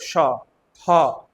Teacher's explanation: तो जब आप बोलोगे ह बोलो जरा, आपके हाथों में गर्म हवा का महसूस होगा, ऊष्म है ये, ऊष्म मतलब गर्म, है ना, तो ये ऊष्म व्यंजन है, हटा दो।